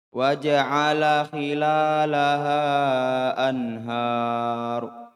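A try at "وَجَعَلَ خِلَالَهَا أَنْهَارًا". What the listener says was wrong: coba hati-hati tambah matnya. Kemudian wakofnya salah ya. Wakofnya salah. Gimana, apa nama wakofnya ini? Mat, iwad, anid, tanwin. Berapa bacanya? 2 harokat.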